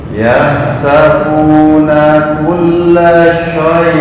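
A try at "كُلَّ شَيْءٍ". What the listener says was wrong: Ya, bukan shay, sa kulla shay, sa.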